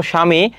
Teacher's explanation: শব্দের আদিতে ব ফলা যুক্ত হলে ব অনুচ্চারিত হয়। · ব ফলা যুক্ত হলে ব অনুচ্চারিত হয়, যেমন এখানে কি আছে, উদাহরণ দেখো, স্বামী, এখানে বয়ের উচ্চারণটা হচ্ছে না।